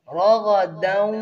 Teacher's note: را اور غین کو پر پڑھیں گے